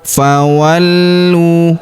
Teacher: Huruf lu kita tahan dan tekan karena terdapat tanda tasydid di atasnya. Lalu kita panjangkan 2 harokat karena waw sukun di depannya. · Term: tasdid